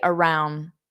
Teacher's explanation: I don't pronounce that D around. I just say around. My tongue goes in the position, but I don't pronounce it.